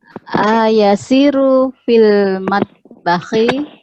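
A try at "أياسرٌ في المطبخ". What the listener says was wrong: Ulangi, ya-nya panjang, Ibu.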